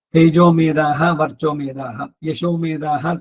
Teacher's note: ಮೇಧಾ ಸೂಕ್ತ ಅನ್ಬೇಕಾದ್ರೆ ದಾ ಮಹಾಪ್ರಾಣ ಇರುವಂತದ್ದೇನೆ